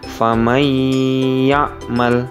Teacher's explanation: Sedangkan untuk huruf beserta contoh dari idgham bi gunnah, yang pertama yakni huruf ya dengan contoh famay ya'mal, sehingganya nun mati menjadi tidak terbaca karena memang langsung digantikan dengan huruf ya, dan ya menjadi salah satu huruf dari idgham bi gunnah, dan cara bacanya harus dengan dengung